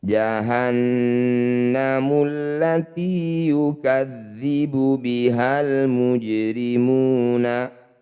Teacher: Nun bertasydid disebut bacaan gunnah musyaddadah. Bunyi nun didengungkan 2 harokat.